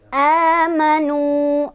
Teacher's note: Jadi amanu ini panjangnya 2 harokat sama kayak mad tabi'i. Amanu, nu ada mad tabi'i karena dhammah bertemu wawu sukun, dibacanya panjang 2 harokat. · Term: mad badal